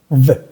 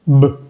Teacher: La V pequeña, tus dientes de arriba tocan los labios de abajo. V. Mientras que la B grande, los labios de arriba y de abajo se tocan.